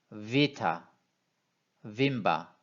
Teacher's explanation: 이 V는 윗니로 아랫입술을 살짝 문 상태에서 발음을 해야 됩니다. 와 이런 식으로 비타, 빈바 이런 식으로 발음을 하셔야 됩니다.